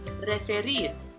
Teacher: So in the final syllable, rir, spelled R-I-R, is stressed.